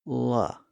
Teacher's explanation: At first glance, there seems to be something a little different going on there. When we make the L sound, the tip of the tongue actually touches the ridge behind the upper teeth.